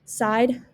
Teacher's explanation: the southern shift has characteristics such as a long i sound turned into an ah sound